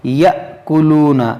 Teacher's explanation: الذین یأکلون الربا، یہاں پر آپ غور کریں، دیکھیں یہاں پر حمزہ ساکنہ ہے، اس کو ہم جھٹکا دے کر پڑھیں گے